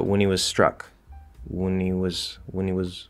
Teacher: the n has to be there as the w is releasing